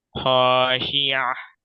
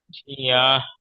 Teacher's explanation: এটা বড় হা জি হবে না, ছোট হা হবে, গম্ভীর আওয়াজে গশিয়া।